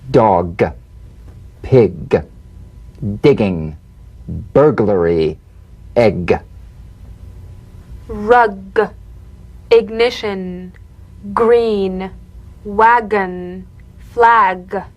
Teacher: You'll feel a crisp tap and a voiced pulsation of the back of the tongue. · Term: drum beat G